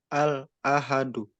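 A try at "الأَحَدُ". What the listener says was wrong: nah, tambahan juga, jadi nggak ada jeda ya. Al-ahadu, nah, itu terjeda. Jadi yang benar al-ahadu, al-ahadu, gitu ya.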